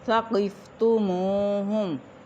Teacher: قاف موٹا ہے، واو ساکن میم کے اوپر پیش واو مدہ، اس کو ہم ایک الف کے برابر لمبا کریں گے